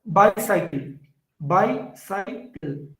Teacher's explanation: The initial one is stressed. The other two are unstressed. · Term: dactyl